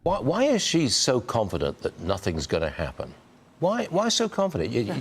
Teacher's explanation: I just have to point out the vocal fry there.